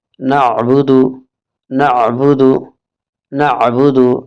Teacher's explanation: عین کی آواز نکالیں، یہاں پر الف کی اور حمزے کی آواز نہ نکالیں